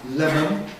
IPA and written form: ˈlemən (lemon)